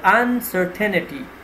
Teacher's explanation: the stress would be on the second syllable